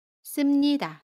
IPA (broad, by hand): 씀니다